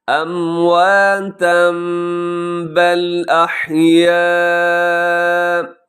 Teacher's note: تنوین کے بعد با ہے تو تنوین کو میم سے چینج کر کے پڑھیں گے